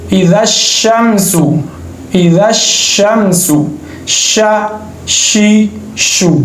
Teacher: इसको अदा करते वक्त आवाज़ मुंह में फैल जाती है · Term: तफशी